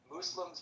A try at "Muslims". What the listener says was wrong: It's pronounced mus, not moose. Mus.